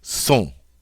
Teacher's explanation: And then finally, the il plural form is S-O-N-T, sont. Don't pronounce the final T.